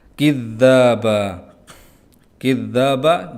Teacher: dza bertasydid ditahan sejenak untuk tasydid